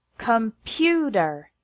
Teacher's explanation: Take the word computer as an example. It has three syllables and the stress is on the second one, computer. If we put the stress on the first or third syllable, the word sounds completely different.